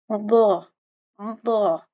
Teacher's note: اس کا مخرج دیکھیں، زبان کی دائیں اور بائیں کروٹ کو، ٹھیک ہے، اور بائیں جانب کی سارے دانتوں کی جڑ سے لگانا ہے، اور پھر درمیان سے زبان کو درمیان تالو کی طرف بلند کرنا ہے۔ یعنی آپ کی جو زبان کی لیفٹ اور جو رائٹ سائڈ ہے، ٹھیک ہے، کروٹ کہتے ہیں زبان کا نچلا حصہ، ضا، ٹھیک ہے، ان کو آپ نے سارے دانتوں کی جڑوں سے لگانا ہے، ٹھیک ہے۔